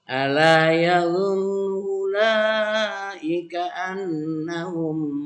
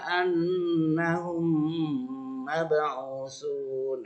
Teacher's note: Contohnya ala yadhunnu ulaika annahum. Nah, karena idgham maka dimasukkan. Dan di situ ada tekanan, satu ketukan lagi karena ada tasdid.